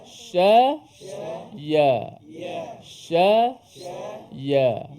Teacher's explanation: Kebetulan shin dan juga ya tu makhrajnya sama di tengah lidah. Di tengah lidah.